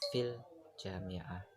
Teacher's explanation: Terdapat jeda di antara kata fil dan juga jami'ah. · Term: sendi tunggal